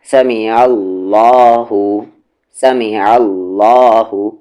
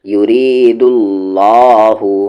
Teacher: اب یہاں پر دیکھیں لام جلالہ ہے، لام جلالہ سے پہلے والے حرف عین پہ زبر ہے تو ہیوی